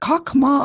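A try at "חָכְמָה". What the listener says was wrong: Chokma. Kamatz underneath the chet is what we're calling kamatz katan. So it's chokhmah.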